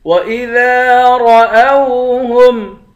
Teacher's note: وَإِذَا ذال کو ایک الف کی مقدار کھینچیں گے، الف حروف مدہ ہے